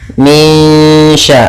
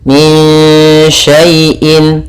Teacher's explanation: Cara membacanya disamarkan ke shin. Min sya, langsung ke sya makhrajnya. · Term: ikhfa hakiki